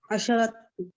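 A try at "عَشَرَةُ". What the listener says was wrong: अशरा, अशरा, ठीक है ना, जबर। जब आप अशरा कहते हैं तो आप यहाँ पे सुकून लगा देते हैं, गलत हो जाता है। अशरतु तुल्लाबिन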